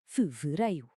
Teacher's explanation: Não é um R arrastado, é um R vibrante que se faz com um toque muito rápido e leve da ponta da língua no céu da boca.